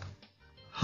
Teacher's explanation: ह हा महाप्राण आहे किंवा यालाच महाप्राण व्यंजन म्हणतात. ह चा उच्चार करताना फुफ्फुसातील हवा जोराने मुखावाटे बाहेर फेकली जाते, म्हणून ह या वर्णाला महाप्राण म्हणतात.